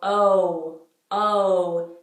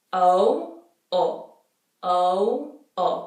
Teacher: in the English oh you go oh oh your lips close towards the end of that sound where is it Italian it doesn't